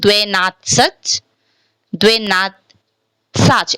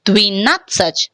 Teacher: why this word is pronouncing as dvi? Because ye is unstressed